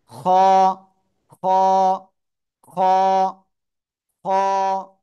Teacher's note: শেষ ভাগ গলা এই যে শুরু এই যে শেষ এই যে গলার শেষ ভাগ থেকে মোটা আওয়াজে এক আলিফ টেনে উচ্চারণ করব